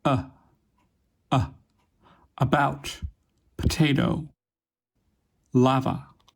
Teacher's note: It is produced in the middle of the mouth with the body of your tongue raised to mid-height, with unrounded lips and a very relaxed tongue. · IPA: ə